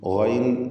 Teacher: ഗൈൻ ഇസ്തിഅലാഇൻ്റെ ഹർഫാണ്, തഫ്ഖീം നൽകേണ്ടതാണ്. കുറഞ്ഞ തഫ്ഖീം മാത്രം, കസ്റ ആയതുകൊണ്ട്.